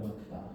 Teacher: 단모음 오랑 단모음 아가 합쳐져서 뭐가 된다? 이중모음 와가 된다는 겁니다